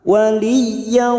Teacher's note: fathah tanwin bertemu waw, idgham bi gunnah masuk dan mendengung, masuk ke huruf waw. Yau dan ditahan selama 3 harokat.